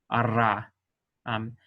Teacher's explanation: Like if you can't do the uvular trill, ara, go ahead and do a Spanish alveolar trill, the ara. It's better than doing an English R.